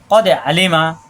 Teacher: কদে ক কা হবে না, দাল সাকিন কলকলা, কদে আলিমা কোনো টান নেই, হাসব দিয়ে কদে আলিমা।